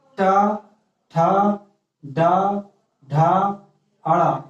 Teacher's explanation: मूर्धा से बोले जाते हैं